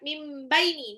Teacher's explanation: Mim baini nun sukun ketemu ba itu iqlab ya. Jadi ee nunnya berubah menjadi mim. Lebur dan tahan dua sampai 3 harakat. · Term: iklab